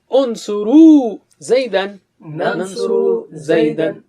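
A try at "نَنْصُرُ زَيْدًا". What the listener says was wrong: ننصر زیدن. Okay, ننصرو پہ کھینچنا نہیں.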